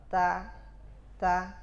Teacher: pada awalnya diberikan syiddah dan diakhirkan dengan hams